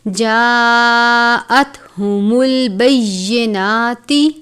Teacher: ایک ہا جو ہم نے پڑھی تھی وہ ہم حلق سے ادا کرتے ہیں، اسے کہتے ہیں باریک ہا، اور اس ہا کو ہم کہتے ہیں گول ہا جو حلق کے آخر سے ادا کرتے ہیں، پڑھتے وقت آواز بھاری سی آتی ہے، جیسے جاءتہم البینات، اس طرح سے۔